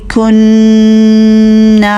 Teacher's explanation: کاف کو ہمس کے ساتھ پڑھیے، سانس بھی شامل کیجئے. کننا نون مشدد ہے، غنہ پورا کریں گے، الف مد کو بھی لمبا کریں گے.